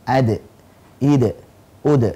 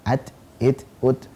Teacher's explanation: Nah, di lain sisi, ternyata dal punya sifat kol-kolah, memantul ketika sukun.